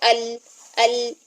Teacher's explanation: لام جب ساکن حالت میں ہوتا ہے تو اس میں سانس بند ہو جاتا ہے، لیکن آواز میں جو ہے نا وہ درمیانہ جو رویہ ہے وہ ہم رکھیں گے. · تو لام کی آواز کو آپ نے قلقلہ کی طرح ہلانا نہیں ہے